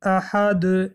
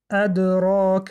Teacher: فرق بین قلقله کبرا و صغرا در آن است که در قلقله کبرا ما کمی صدا را بلندتر می خوانیم، احد، و در قلقله صغرا به سبب آنی که حرف در بین کلمه است صدا کمتر داده می شود. مثال: ادراک.